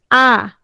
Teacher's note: বিবৃত মানে ঠোঁটটা ছড়িয়ে যাবে